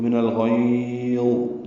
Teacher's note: لمبا کیا غین کو، لین عارض للسکون یعنی لین وقفی بنائی، اور غا ساکن ہوگا، اس پہ اظہار ہوگا.